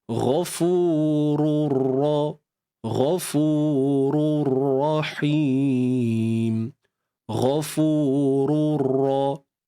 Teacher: Tanwin bertemu dengan ra, idgham bila gunnah. Ya. Masuk sempurna. Tanpa dengung.